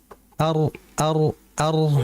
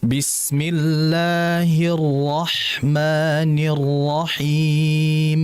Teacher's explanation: Jadi rnya itu ee tadi yang pertama pada yarrahmanirrahim itu jangan terlalu nempel ya. Jadi cukup disentuh aja ar ar ar itu jadi jangan banyak getaran. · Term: Dua getaran saja